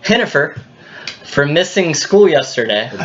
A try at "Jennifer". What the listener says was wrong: There's not even an H in Jennifer. Please excuse Jennifer. Please excuse Jennifer. Not Hennifer. This isn't like a Hennessy.